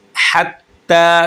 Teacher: हत्ता, ता के ऊपर शद है। शद वाला हर्फ सख्ती से पढ़ा जाता है। शद वाला हर्फ हमेशा 2 दफ़ा पढ़ा जाता है।